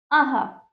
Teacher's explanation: हा की ध्वनि उत्पन्न होती है, हा। ठीक है, इसे विसर्ग कहते हैं, इसका उच्चारण आधे ह की तरह होता है